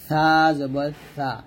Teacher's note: লাগিয়ে উচ্চারণ করব অর্থাৎ আমাদের বড় দুইটা দাঁত আছে সামনে ওই বড় দুই দাঁতের আগার সঙ্গে জিহ্বার আগারটা লাগাবো পাতলা করে লাগিয়ে